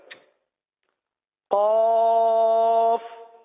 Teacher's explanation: زبان کی جڑ اور تالو کا نرم حصہ یہ قاف کا مخرج ہے